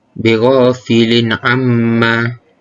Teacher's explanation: Cara bacaannya adalah dengan menjelaskan sebutan huruf nun mati atau tanwin tersebut. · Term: izhar halki